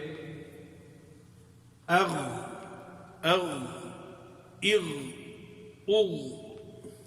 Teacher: جو واپس آتی ہے ٹکرا کے وہ قلقل کی آواز ہوتی ہے. تو یہ آواز جو ہے یہ ایک دفعہ جا کے رکتی ہے پھر جاری ہو جاتی ہے